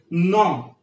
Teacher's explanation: And again here we have alveolar nasal sound. No, your tongue comes and touch at the teeth ridge. This is alveolar sound.